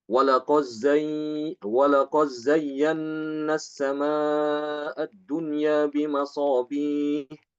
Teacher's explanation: Imam Hisham itu membaca dengan idgham, mengidghamkan dal ke zai.